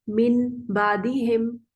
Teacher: गुन्ना तो मीम में भी होता है और मीम बा के ज्यादा करीब है, तो उन्होंने नून को मीम से बदल दिया। तो इन्होंने इस वजह से यहाँ पे एक छोटा मीम लिखा होता है कि असल में तो ये नून ही है लेकिन पढ़ने में मीम आ रहा है, इसलिए छोटा करके लिखते हैं। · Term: इकलाब